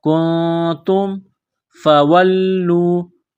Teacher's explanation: تنوین نون ساکن کے بعد تا ہے، حروف اخفا ہے، آواز ناک میں چھپائیں گے، غنہ کریں گے